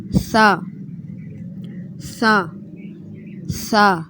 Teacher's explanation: سا سا سا، اس کو بھی نرمی سے آپ نے ادا کرنا ہے۔ زبان کی نوک جو ہے وہ اوپر والے دانتوں سے ٹچ کرے گی تو یہ حرف ادا ہوتا ہے